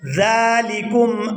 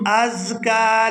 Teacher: زال ہمیشہ نرمی کے ساتھ ادا ہوتا ہے اور زا جو ہے اس کی آواز سیٹی کی مثل ادا ہوتی ہے.